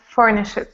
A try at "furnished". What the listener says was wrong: Okay, and remember with furnished, you do not actually say nud. So furnished. It's really that's how you actually pronounce it. Furnished, like that. T? T? But we actually do spell it with an ed. But in your mind, when you see an sh, think T.